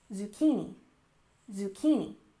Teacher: Zucchini has emphasis on the second syllable, zucchini, zucchini.